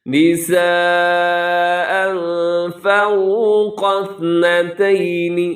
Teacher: تنوین ہے 2 زبر، اس کے بعد فا ہے تو یہاں اخفا کیجیے گا